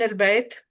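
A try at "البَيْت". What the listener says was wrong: بیت، بیت نہیں بیت. اس کو مجہول طریقے سے نہیں پڑھیں گے بلکہ جو اعراب ہے نا اسی طرح سے پڑھیں گے.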